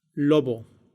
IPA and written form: ˈlo.β̞o (lobo)